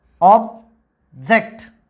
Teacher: the word plays its role as a noun so stress is given on the first syllable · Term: word stress